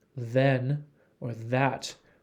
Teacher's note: th in think there is no vibration in your vocal cords if you say the th as in then or that there is a vibration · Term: voicing